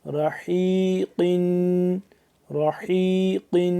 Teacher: را زبر را، حا یا زیر حی، رحی، قاف دو زیر قن، رحیقن، رحیقن، حا کو ہم نے گلے سے نکالنا ہے، حلق سے، حلق سے نکالنا ہے، تھوڑا سا زور لگتا ہے اس پہ